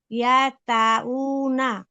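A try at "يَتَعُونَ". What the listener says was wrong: না আপু, হয়নি। আম, এই যে উতে আমরা উতে একটু টান দিয়েছি, কোন আপু কি লক্ষ্য করেছেন? এই যে উ না, এরকম টেনে কেন পড়লাম? টেনে পড়লাম, এটা মাদের হরফ।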